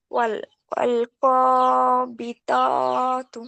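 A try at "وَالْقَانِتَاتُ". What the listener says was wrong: বানাটা নুন। ওয়াল কানিতাতু।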